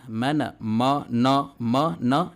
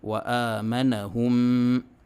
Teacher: میم اور نون کی آواز جب اس کے اوپر زبر آئے تو صاف ادا ہونی چاہیے، موٹی نہیں ہونی چاہیے